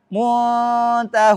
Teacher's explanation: Kemudian ta tidak boleh tebal. Harus dibaca tipis dengungnya.